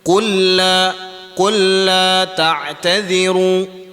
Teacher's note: kita masukkan huruf lam tersebut kepada huruf lam tanpa kita dengung. Hukum ini juga kita boleh kita panggil dia idgham mutamathilain.